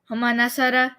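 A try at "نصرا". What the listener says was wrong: Nasara, a little bit longer.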